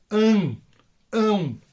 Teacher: a letrinha tem que ser pronunciada de modo anasalado